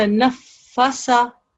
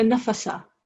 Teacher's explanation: The correct way of reading that will be to stress on the fa. So it would be the nafasa. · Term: fa mushaddad